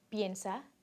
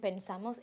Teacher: The stem vowels are different. Ye in piensa and e in pensamos. When a verb is stressed on the last vowel of its stem, the verb undergoes a spelling change.